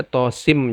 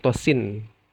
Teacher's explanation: Ya, di ujungnya nun sukun bertemu mim, dan itu nun bertemu mim, maka ada idgham. Dimasukkan nun sukunnya kepada mim disertai dengan gunnah. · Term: idgham disertai dengan gunnah